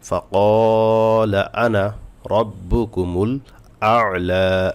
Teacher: তো আনা বলার ক্ষেত্রে জবরের বাম পাশে খালিফ থাকা সত্ত্বেও এই আনায় টান হয় না।